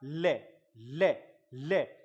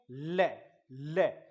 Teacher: इसके उच्चारण में जीवा, जीभ के अगल बगल से हवा निकलती है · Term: पार्श्विक ध्वनियां